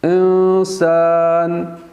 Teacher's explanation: یہاں پہ اخفاء ہو رہا ہے اور آواز ناک میں جا رہی ہے، ہلکا سے ٹھہرائیں گے